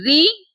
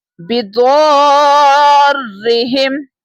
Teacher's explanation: را کے نیچے جب زیر ہوتی ہے اسے ہم باریک پڑھتے ہیں تھنر ٹون میں پڑھتے ہیں